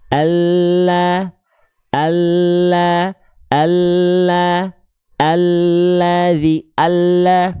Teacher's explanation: beda dengan l alfabet all ya lebih penuh pasti terlihatnya lidahnya lebih penuh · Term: huruf lam